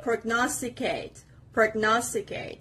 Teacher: And the stress is on the second part